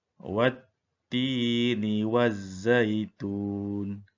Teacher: kita tidak membunyikan huruf alif dan lam, tetapi kita terus pada huruf syamsi iaitu huruf ta dan juga huruf zai. Kerana kedua-dua huruf ini mempunyai tanda sabdu. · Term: idgham syamsi